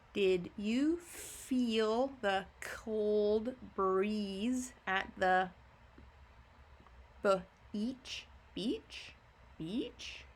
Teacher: Beach? Your voice goes up. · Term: asking sentence